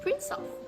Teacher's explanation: the last sound of the first word, which is s, is combined with the first sound of the next word, which is schwa. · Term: linking